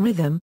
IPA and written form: ˈrɪðəm (rhythm)